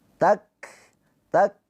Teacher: Jangan takfu, takfu, tapi dikasih nafas terakhirnya. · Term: hames